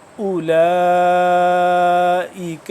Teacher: واو تو ہے آگے لیکن واو کے اوپر جزم نہیں ہے، تو یہ ویسے ہی واو ہے، اس کو پڑھا نہیں جائے گا